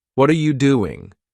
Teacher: an example a native speaker might say what are you doing with their voice Rising on what and falling on doing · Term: intonation